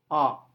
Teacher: saat kita mengucapkan vowel a mulut terbuka lebar. Sementara lidah berada dalam posisi yang rendah. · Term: open